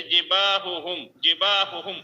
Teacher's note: جیسے جباہہم، جباہہم ادا کیجئے، اس میں جو ہے زبان کی جڑ جو ہے وہ تالو کی طرف بلند نہیں ہوگی.